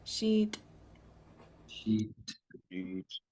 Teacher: Starting with the end sound, this SH. So it'll be high tone double E and a pinch T.